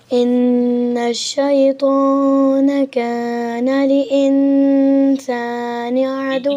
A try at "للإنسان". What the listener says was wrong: नहीं बेटे लिल है डबल लाम है। आप डबल लाम पढ़ रहे हैं या एक लाम पढ़ रहे हैं? अच्छा दो लाम है बेटे, दो लाम, एक पे जज़म है ना। लिल है।